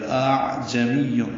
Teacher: دوسرے حمزے کو عین سے ملائیں گے، عین وسط حلق سے ادا کریں گے، جیم کو جلدی پڑھیں گے، میم کو یا سے ملائیں گے، یا کو واو سے ملائیں گے. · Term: تسہیل